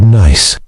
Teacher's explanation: You can clearly hear and feel that final S sound, that little puff of air. That's a voiceless sound.